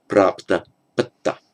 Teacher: So the pra becomes a pa, the a is shortened to a before a conjunct consonant, and the p and the t merge to double t